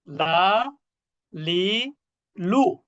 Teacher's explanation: জিহ্বার আগা উপরের মাড়ির সাথে। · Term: লাম